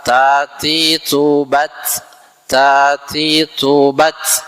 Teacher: ketika sukun itu ta Itu ada hamesnya ya ada hembusan udaranya